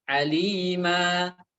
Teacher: Ketika saya berhenti pada kata aliman di sini, nunnya saya tidak baca. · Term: mad iwad